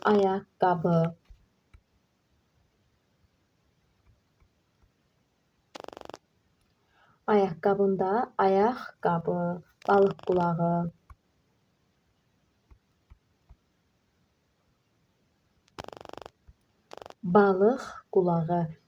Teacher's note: Mürəkkəb sözün qovşağında isə qoşa q'lar x, q şəklində tələffüz olunur.